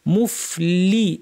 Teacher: অনেকে জেরটা সঠিক ভাবে উচ্চারণ না করার কারণে লে শোনা যায় প্রপার জের লি বলতে হবে